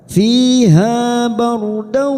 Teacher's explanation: ra sukun yang ditoli fathah kita baca tafkim atau tebal.